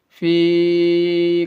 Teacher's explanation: فی یا مدہ ہے، یہ یا مدہ میں 1 الف کے برابر کھینچیں گے۔